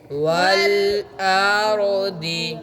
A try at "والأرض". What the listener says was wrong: भाई रॉ भी मोटी है, वल अर्दी अब आपने वक़फ़ करना है, दौद पढ़नी है, ज़ेर नहीं पढ़नी। वल अर्द जी बदीउस समावाति वल अर्द